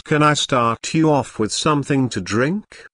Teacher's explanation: Notice how the question starts with can. Since this is a yes, no question, the intonation rises at the end.